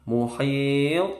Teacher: Muhit, to-nya mantul, qalqalah kubro dan bacaan mat arid disukun sampai 6 harokat panjangnya.